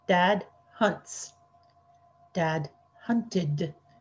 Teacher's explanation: we're going to pronounce that ted as a second syllable normally we just put a little d sound at the end